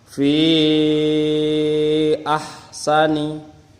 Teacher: Hukum mad jaiz munfasil terjadi jika ada mad yang bertemu dengan hamzah tidak dalam kalimat yang sama atau di lain kalimat. Cara membaca madnya harus panjang 5 harokat. Nah, 5 harokat atau 2,5 alif.